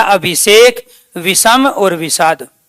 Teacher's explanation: इ के बाद स आए तो स का परिवर्तन मूर्धन्य स में हो जाता है।